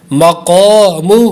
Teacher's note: قاف پہ الف مدہ ہے، حروف مستعلیہ بھی ہے اس لیے پر بھی کریں گے اور لمبا بھی کریں گے